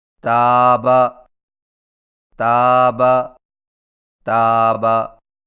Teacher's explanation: تا کی ادائیگی میں زبان کی نوک کو سامنے والے اوپر کے 2 دانتوں کی جڑ سے لگا کر باریک آواز میں پڑھیں